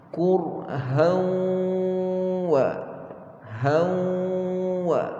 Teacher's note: Dengung bila jumpa waw, pastikan terus mulut kita muncung. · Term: Idgham ma'al ghunnah